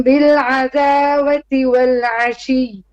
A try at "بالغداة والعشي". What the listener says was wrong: Bil ra, not ra. Rain is heavy, and also this is not radawati. This is actually radati. The wow here, it is silent. It is like an alif. Bil radati.